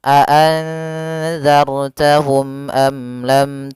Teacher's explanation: mim dan ba maka dia dinamakan dengan Zar syafawi maka ketiganya harus jelas suara mimnya dan tidak boleh ditahan